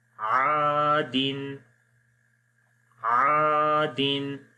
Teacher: الف مدہ ہے، الف سے پہلے زبر آ گیا تو الف ایک الف کے برابر لمبا کیا جائے گا